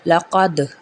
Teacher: موٹا قاف پڑا جائے گا، یہاں پہ قلقلہ کیا جائے گا کیونکہ دال بھی موٹا ہے، قاف لقد، خا زبر خا، لام